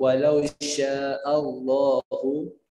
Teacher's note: A-nya enggak boleh Allah, enggak boleh O, tapi A, Pak.